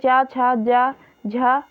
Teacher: तालु और जीभ के स्पर्श से बोले जाने वाले वर्ण तालव्य कहलाते हैं।